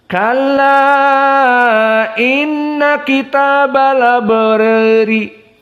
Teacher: maka qiraah Wars di sini dibaca dalam keadaan annaql